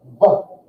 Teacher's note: the V sound, a V, comes by putting your top teeth on your bottom lip. V. And pushing air through there.